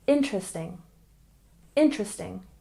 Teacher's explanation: And interesting, we stress the first syllable